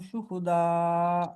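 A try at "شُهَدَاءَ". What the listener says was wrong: शुहा, शुहू नहीं है, हा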